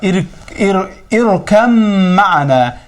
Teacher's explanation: İrkəm ma'ana mim hərfinə təşdid verərik və burada bə hərfi nə olur? Aradan gedir. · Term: idğam